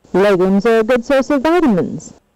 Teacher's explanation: it has a low beginning for it and a gradual rise to the end of the word and then a final fall · it's marked by gradual rise and then a final fall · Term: surprise redundancy tune